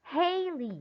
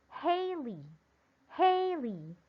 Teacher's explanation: syllable hail is pronounced louder and longer than lee